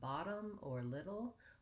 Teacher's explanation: the flap t which sounds more like a d